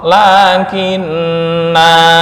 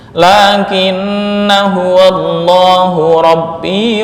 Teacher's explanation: artinya lakinna dibaca panjang jika waakaf dan jika wasal pendek